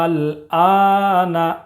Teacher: اس کی مقدار ہے 3 الف یا 5 الف کے برابر کھینچ کر پڑھنا ہے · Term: مد لازم